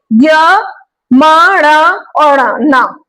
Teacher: ये देखिए य, म, ण और न, ये हमारे नासिका से इनका उच्चारण हो रहा है, नाक से, नाक, नासिका मतलब नाक से जिनका उच्चारण हो रहा है, जैसे य, म, ण, नाक से जिनका उच्चारण निकल रहा है वो है हमारे अनुनासिक वर्ण, इनका उच्चारण स्थान नासिका है।